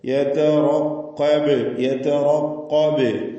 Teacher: ഖൽഖല കുബ്ര നൽകി ബായിൽ വഖഫ് ചെയ്യുക. സുക്കൂൻ വ്യക്തമാക്കി ഹറക്കത്ത് പോലെ കേൾപ്പിക്കണം.